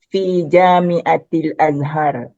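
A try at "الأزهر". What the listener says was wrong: Azhar hanya pendek ya.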